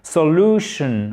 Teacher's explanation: Accent tonique sur la deuxième syllabe.